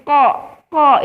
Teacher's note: huruf yang dikeluarkan dari pangkal lidah atau dari bagian lidah yang paling dalam dekat dengan tenggorokan dan dia bertemu dengan langit-langit berdaging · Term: huruf qaf